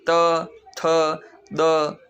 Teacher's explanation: कुछ वर्ण ऐसे होते हैं जो दंत्य होते हैं यानी कि दांतों से बोले जाते हैं। जबान दांतों को टच करती है